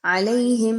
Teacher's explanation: یا لین ہے، 1 سے 2 الف کے برابر اس کی ادائیگی رکھیں گے